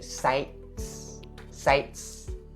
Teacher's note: So the T sound here is supposed to be stopped. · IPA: /saɪt/